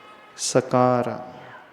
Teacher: सरोता क्या बोलते हैं? सकार, यानी हमारी टंग जो है निचली दंत पंक्ति को टच करती है ना, इसलिए उसे दंती स कहा जाता है। दांत को टच कर रही है, इसका दंती।